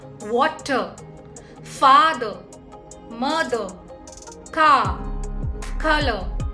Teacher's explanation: R sound in English language becomes silent while pronouncing words like water father mother car color but R sound is pronounced when it is followed by vowel